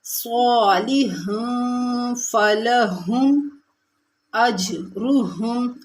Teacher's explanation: اج جیم ساکن ہے، کلکلہ کریں گے۔